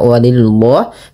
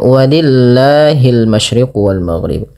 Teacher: Bila lafal Allah didahului dengan huruf berharakat kasrah, maka lafal Allah dibaca dengan tipis lamnya, tidak dibaca walillah, tapi dibaca dengan walillahil masyriq wal maghrib.